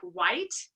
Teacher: meaning there's vocal fold vibration or it's voiceless so for example in a word like white the T sound doesn't have a lot of vocal fold vibration